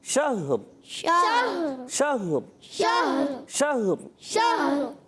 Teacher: ہا پر زبر نہیں، ہا بھی ساکن، را بھی ساکن